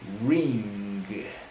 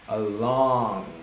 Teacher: I can feel the vibration when I'm pronouncing that word because ng is right there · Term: ang